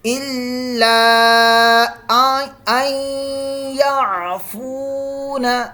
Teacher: یہاں مد منفصل ہو رہی ہے، اس کو لمبا کریں گے 2 الف تک